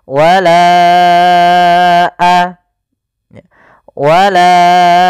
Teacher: bukan pada lafalanya maka kita namakan dengan Mad Jaiz munfasil maka kita panjangkan huruf laanya sepanjang empat harakat atau lima harakat · Panjangkan la-nya dulu 4 harokat baru lepas.